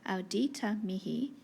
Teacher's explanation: the ow is long because AU is a diphthong. Diphthongs are long, so spondy there.